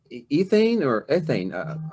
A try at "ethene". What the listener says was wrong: The first, what we had before, C2H6 was ethane, A-N-E. This is ethene. The ENE ending pronounced with a long E, ethene.